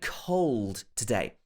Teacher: it has the l sound closer to the end, the dark L sound